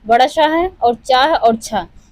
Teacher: बड़ा श है और च और छ यह जो तीन है यह तालु से उच्चारित होते हैं।